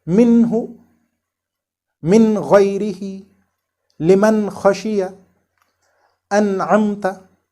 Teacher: this noon is articulated with a short ghunnah. We neither have to conceal it nor elongate it. It has to be read properly without any extra efforts like minhu, min ghayrihi, liman khashiya, an'amta, etc. · Here we make this noon which is followed by hurooful-halqiy apparent without any extra ghunnah on it. Okay? It is called nun mudghara or apparent nun.